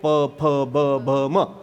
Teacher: ओष्ठ काय आहे प फ ब भ म · हे दुसऱ्याच्या ओठाला ओठ लावल्यानंतर नाही अक्षर तयार होत ना. आपल्याच ओठाला आपलाच ओठ लागला की अक्षर तयार होतं. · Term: ओष्ठ्य